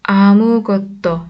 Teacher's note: 달려나갔지만 şeklinde. 아무것도 yine S'den sonra ünsüz bir harf geldiği için D şeklinde okuduk.